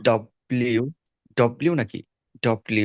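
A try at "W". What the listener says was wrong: ডাবল, ডাবল ইউ, ডাব্লিউ না, ডাবল ইউ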